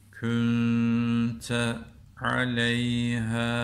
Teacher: Künte derken de ne yaptık? İhva yaptık. Sakin ondan sonra T harfi geldiği için.